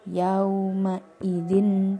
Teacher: cara membacanya samar-samar antara mendengung dan ditekan dua harokat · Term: ikhfa